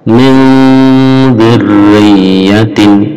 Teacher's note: Min dzurriyyatin samar antara n dan condong ke dzal. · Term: ikhfa